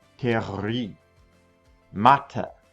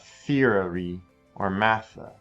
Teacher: TH sound does not make the V or F sound. There is no equivalent sound in German. So we just use it just like a T.